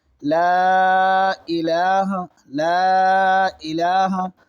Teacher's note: یہاں حرف مد کے بعد حمزہ آ رہا ہے، اسی لیے مد ہو رہا ہے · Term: مد منفصل